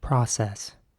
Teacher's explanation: in american english it would be more like process with an ah sound